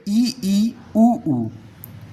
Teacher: ऐसे स्वर जिनका उच्चारण करते समय मुख लगभग हमारा बंद रहता है, यानी कि क्लोज्ड रहता है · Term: संवृत्त